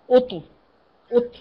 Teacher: لا تهمسيها، ليس فيها همس، ايوه فيها قط شدة ودفء